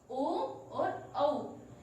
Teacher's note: कंठोष्ठ्य वर्ण जो कंठ और ओष्ठ के द्वारा बोले जाते हैं। ओ दौतो कंठोष्ठम, ओ और औ, इसका उच्चारण कंठ और ओष्ठ है, इसलिए इसको हम कंठ ओष्ठ्य वर्ण कहते हैं।